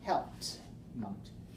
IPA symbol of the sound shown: t